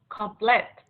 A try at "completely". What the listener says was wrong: difference here is that this word has an ly or ly. Completely. Complete. And then ly. Completely. Completely, not complete. It's completely.